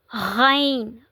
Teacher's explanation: यानी कि हलक के दरमियानी हिस्से से जिसे वस्ता-ए-हलक भी कहते हैं। गैन गैन भी हरूफ हल्की में से है। यह भी अदना हलक से अदा होता है।